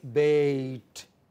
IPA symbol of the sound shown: ei